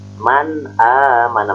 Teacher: Hamzah ini termasuk huruf izhar, izhar halki. Nah, yaitu termasuk adnal halki. Man mana, maka si nunnya harus dibaca jelas. Man, bukan mang, bukan mang, bukan mam, tapi man.